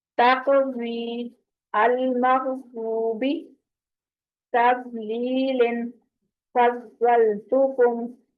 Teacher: ساکن ضاد کو ادا کرتے ہوئے نا کلکلا ہو جاتا ہے، تو اس کا خیال کرنا ہے کہ کلکلا نہیں ہونے دینا. آپ پکڑ کے رکھنا ہے اس کی آواز کو، مخرج پہ رکھ کے ٹکانی ہے زبان.